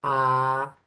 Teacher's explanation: a poder ver la garganta del ámbito porque en este caso la lengua va a estar en su punto más bajo en su punto más bajo por eso a esa vocal se llama vocal baja